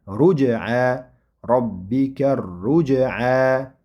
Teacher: Ro demak zamma bilan bo'ldi va undan keyin sukunlik jim. Jim harfi sukunlik bo'lganda qalqala sifati bilan o'qiladi. Robbika ruj'a robbika ruj'a deb o'qisak xato bo'ladi.